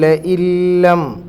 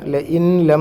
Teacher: കല്ല ലഇല്ലം, ല ഇൻ plus ലം, അവിടെ ല ഇൻ ലം എന്ന് പറയില്ല, നൂനിനെ നമ്മൾ ഉച്ചരിക്കാൻ പാടില്ല. ലാമു റാ വരുമ്പം നൂനിനെ അതിലേക്ക് ലയിപ്പിച്ച് ഓതണം, പക്ഷെ മണിക്കാനൊന്നും പാടില്ല